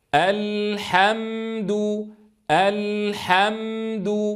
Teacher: أفتح الفم عند الهمزة، أسكن عند اللام الساكنة، أعيد الفتح مرة ثانية عند الحاء المفتوحة، أسكن عند الميم، أضم عند الدال